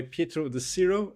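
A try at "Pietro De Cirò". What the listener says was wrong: Almost correctly. It has the accent at the end of it.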